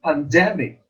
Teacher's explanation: In the word pandemic, the second syllable is accented or stressed.